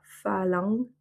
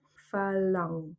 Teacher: Ang et c'est pas am. Donc on ne referme pas les lèvres pour faire le M. Phalang. Et en fait, c'est plutôt la langue qui vient un peu se coller au fond de la gorge pour faire une sorte de eng. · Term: sons nasaux